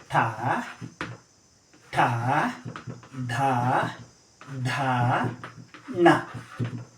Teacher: ನಾಲಿಗೆ ಸುರುಳಿ ಆಕಾರದಲ್ಲಿ ಅಂಗ್ಳು ಭಾಗಕ್ಕೆ ತಟ್ಟಿ ಏನು ಮಾಡುತ್ತೆ, ಉಸಿರನ್ನು ಹೊರಗೆ ಚಾಡ್ತೀವಿ. ಆಗ ಉತ್ಪನ್ನ ಆಗುವಂಥ ಧ್ವನಿಗಳನ್ನೇ ನಾವು ಮೂರ್ಧನ್ಯ ಧ್ವನಿಗಳು ಎಂಬುದಾಗಿ ಕರಿತೀವಿ.